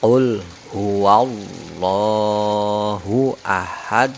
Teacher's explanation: Jadi dimatikan, kemudian diikuti bunyi qalqalah dengan pantulan yang besar